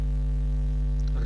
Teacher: रा का विवरण है वर्तस्य, लुंठित, सघोष, अल्पप्राण व्यंजन